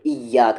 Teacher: یا پر زور دیتے ہیں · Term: تشدید